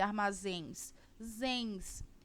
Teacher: zens como é a última sílaba da palavra essa palavra ela é uma oxítona